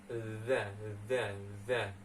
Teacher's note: Za ini ada di ujung lidahnya